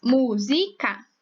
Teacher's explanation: E a sílaba mais forte é mu. Mu, mu. E, então, a sílaba mais forte é a antepenúltima.